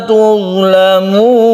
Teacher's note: Tuzlamun ini terakhirnya adalah mad arid lisukun yang panjangnya bisa sampai 3 alif.